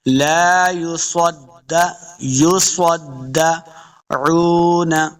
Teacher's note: صاد حروف مستعلیہ سے اس کو موٹا پڑھنا ہے، دال کے ساتھ لیں گے، دال مشدد ہے. · لا یصدعون، عین کو لفظ کے ساتھ پڑھیں گے، عین پیش واو عو، واو کے اوپر اپنے دونوں ہونٹ گول ہوں گے، اس کو دو حرکات لمبا بھی کرنا ہے